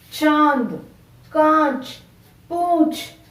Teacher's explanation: अनुनासिक शब्द कहते हैं। इन्हें बोलते समय हवा मुंह तथा नाक दोनों से निकलती है।